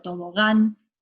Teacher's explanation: Si tenemos la palabra, por ejemplo, tobogán, la sílaba tónica es gan.